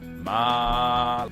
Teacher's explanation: the first tone is the loudest and longest of all the tones